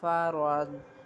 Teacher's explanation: را کے اوپر زبر ہے اس لیے اس را کو پر پڑھیں گے